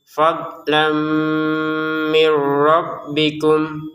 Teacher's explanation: Fadlam mirbikum. Nah, ini sukun bertemu ro dimasukkan dengan tanpa dengungan